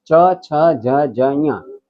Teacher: જીભ તાળ અડે તો જ એ નીકળે એટલે એને કહેવાય તાલવ્ય તાળવાને જીભ અડાડ્યા વગર આ પાંચ અક્ષર બોલી શકાય નહી ચ